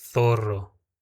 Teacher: Então, por exemplo, aí no caso de sapato, eu leria sapato com a língua presa. A palavra zorro eu vou ler zorro, como com a língua presa